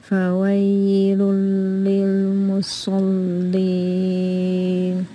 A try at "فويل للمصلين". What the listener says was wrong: This ya is not much, so don't say فوي. It's not too long. Only رخاوة timing. So فويل لل. فويل للمصل. When you finish the صاد heavy, do the both لام شدة كسرة, لام ساكن and لام كسرة light. Don't say مصل. مصلين, this is heavy لام. So try to do the lamb lighter. فويل للمصلين.